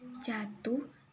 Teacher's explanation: silaba pertama pada kata jatuh diucapkan panjang jatuh bermakna sama dengan ketika kata itu diucapkan panjang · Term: durasi